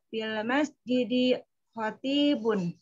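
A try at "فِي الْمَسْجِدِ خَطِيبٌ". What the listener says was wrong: D-nya nggak usah kepanjangan.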